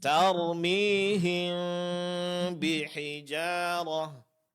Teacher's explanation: Huruf mim dengungkan dan samarkan, sedikit direnggangkan antara kedua bibir